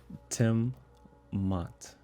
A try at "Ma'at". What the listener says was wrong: Ma'at is 2 syllables. Ma'at.